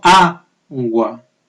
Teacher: esa palabra que lleva la sílaba tónica en la penúltima, o sea, en la sílaba inicial y empieza por A